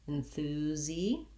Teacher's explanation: the first letter S in enthusiastic says the Z sound, enthusi. The letter I says the tense E, enthusi.